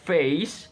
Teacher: mid to high front movement